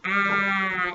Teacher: Is your tongue in the front of your mouth? Ah, no, it's ah. It's kind of in the middle.